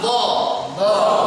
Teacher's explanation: Yang berperan optimal adalah bagian sayap lidah kanan atau kiri bukan bagian ujung lidah ya. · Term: Dod